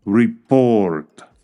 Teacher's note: si colocamos el estrés en la segunda sílaba lo entendemos como el verbo reportar